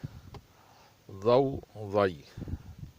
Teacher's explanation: زبان کی ایک سائیڈ اوپر والے داڑھوں کو لگے ہلکی سا، کیونکہ اس کی مخرج نرم ہے، نرمی سے ادا ہوگی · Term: ضاد